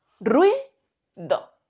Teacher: La U y la I quedan unidas formando este diptongo.